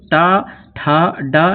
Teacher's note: और ये जो टा वर्ग के जितने भी अक्षर होते हैं आप उच्चारण करके देखेंगे तो टा, ठा, डा में जीभ ऊपर तालु के और थोड़े से ऊपर टकराई जाके और ठक ठक की आवाज इसमें अवश्य आती है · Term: मूर्धन्य वर्ण